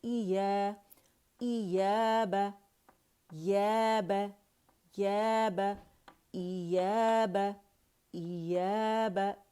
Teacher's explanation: ई मैंने अक्सुल हल्क से पकड़ा, हमज़ा है, इया नहीं पढ़ेंगे हम। ठीक है, इसे शद नहीं बनाना।